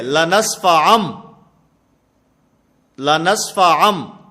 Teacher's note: میم کے ساتھ اس نون کو بدل دینا ہے، اس کو اقلاب کہا جاتا ہے